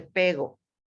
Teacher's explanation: no pronuncia la P o la R, la P, la R y todas esas cosas, pero sobre todo la R. En vez de decir perro, dice pego.